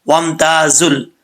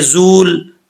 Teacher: اگر کوئی ایسا پڑھے کہ زول، واو کو بھی سمجھے کہ پڑھا جا رہا ہے اور لام بھی، ایسا نہیں ہے. واو الف دونوں جو ہیں اس میں گر جائیں گے.